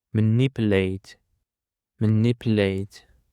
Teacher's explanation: The stress on the second syllable